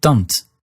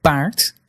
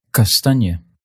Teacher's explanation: All 3 of these were unaspirated. That is, they didn't have big puffs of air like English does.